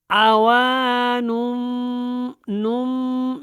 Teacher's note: عوانم، نم، میم کے ساتھ نون کو جوائن کرنا ہے، تو یہ غنہ کے ساتھ آپ نے آواز کو تھوڑی دیر کے لیے جاری رکھنا ہے۔ زیادہ تر آواز جو ہے اخفاء میں ناک میں جاتی ہے، لیکن تھوڑی سی اس کے اندر بھی جاتی ہے، تو اس کو جاری رکھنا ہے۔